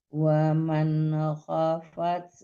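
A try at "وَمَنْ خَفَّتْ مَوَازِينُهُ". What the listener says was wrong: Waman khaf, tasdid ditahan dulu ya. Jangan khafat aja. Kalau khafat aja hilang tasdidnya ya. Nggak dipakai itu tasdidnya. Waman khaffat mawazinuhu.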